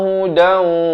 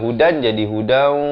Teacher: Di sini daripada hudan jadi hudan, idgham bi gunnah. Masuk beserta dengung dua harakat.